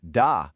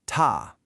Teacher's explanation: The unaspirated da versus the aspirated ta.